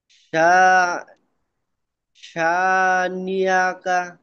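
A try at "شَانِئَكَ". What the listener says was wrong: নিয়া, নিয়া বললে কিন্তু ইয়া হয়ে গেল, এটা হামজা, শানি আকা,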